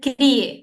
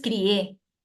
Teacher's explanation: Cuando la mayor fuerza de voz es en la E, es un monosílabo, pero cuando la mayor fuerza de voz es en la I, ahí es hiato acentual.